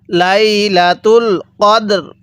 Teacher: ওয়াকফু করলে কদর র টা হালকা উচ্চারণ হবে দালটা পরিপূর্ণ উচ্চারণ হবে